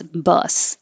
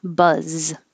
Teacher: the vowel uh and it ends with us bus and 24 has the same uh vowel but ends with a z